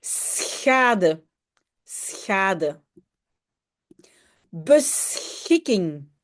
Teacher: Donc, en fait, dans SCH, il y a deux sons. Je commence par S et le deuxième son, c'est très loin dans la gorge, moins loin que le R en français. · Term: le SCH